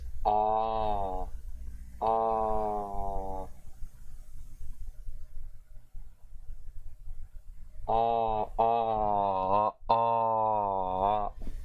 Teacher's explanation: So this is the central open unrounded vowel